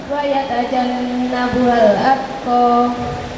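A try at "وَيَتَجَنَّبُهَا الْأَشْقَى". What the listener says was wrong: Atqa apa asqa? Ini yang benar adalah asqa. Pakai shin. Ya, ini pakai shin. Asqa.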